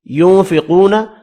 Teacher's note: ينفقون، اب یہاں پر نون کا اخفا ہوگا، قاف پر پڑھنا ہے، واو مدہ کو ایک الف کی مقدار میں کھینچ کر پڑھیں گے